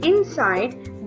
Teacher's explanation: when speaking the very word inside, there is more emphasis on the second syllable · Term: iambic pattern